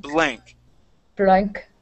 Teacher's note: the B sound so you're going to put your lips together